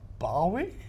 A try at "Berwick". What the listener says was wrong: There's no A in it. Berwick, of course.